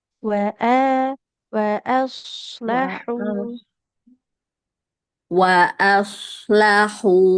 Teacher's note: hati-hati hamzahnya jangan tebal wa aslahu wa aslahu